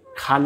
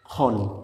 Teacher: খ না খন বলবো, মাঝের আকার সাইলেন্ট থাকবে। খ না খন, আমরা ডাইরেক্ট এই দুইটাই উচ্চারণ করব।